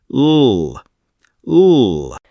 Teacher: the tongue touches the ridge behind the top teeth. A clear contact, and the air flows around the sides. L. For V, top teeth on the bottom lip and voice turned on.